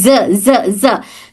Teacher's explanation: अगर वाइब्रेशन ना हो तो साउंड सीन की तरह हो जाएगी